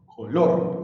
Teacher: Recuerda que color tiene dos sílabas, entonces será última sílaba, penúltima sílaba. El acento está en la última sílaba de la palabra color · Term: palabras agudas